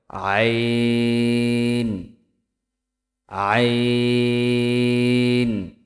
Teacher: কণ্ঠনালীর মধ্যখান হইতে উচ্চারিত হয়